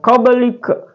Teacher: huruf qalqalah itu ba sukun asli, jadi dibunyikan, bukan qabli ya. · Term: qalqalah sugra